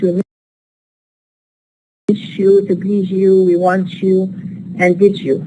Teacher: Palatalization here, where it's a process in which we have alveolars becoming alveopalatals